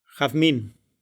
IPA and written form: xaðˈmin (jazmín)